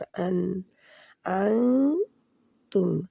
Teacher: नून जो तुम का है इसको ये थोड़ा सा छुपाना है नाक में, पंखे की तरह पढ़ना है। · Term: इख्फा